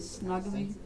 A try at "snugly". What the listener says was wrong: Snugly. You wrapped him snugly. It's not snugly with 2 G's. It's 1 G. Snug- No, I said it's not 2 G's. It's snug.